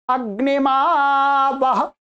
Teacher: आ को प्लुत हो गया